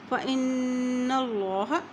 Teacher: यहाँ देखिए नून पे गुना हो रहा है क्योंकि नून के ऊपर शद है।